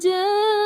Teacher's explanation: یہاں پر 4 to 5 counts تھوڑا زیادہ کھینچنا ہے، اور یہ ایک مد واجب ہے، مد متصل ہے